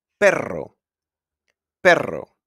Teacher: The R is pronounced like rrr when it's at the beginning of the word or it's a double R.